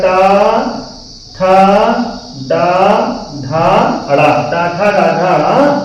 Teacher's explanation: और इनका उच्चारण स्थान क्या है? इनका उच्चारण स्थान है मूर्धा।